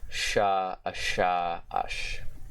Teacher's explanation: the voiceless palatoalveolar sibilant fricative consonant. Or just fricative consonant.